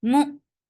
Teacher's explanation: Hamza will get sifa of shidda and the sound will cut off abruptly.